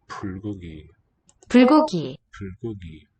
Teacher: kind of an F sound there, in that transition from the sealed lips, stop, pul, to the high vowel with rounded lips